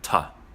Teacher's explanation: The word to, to, often becomes ta, or simply a t sound.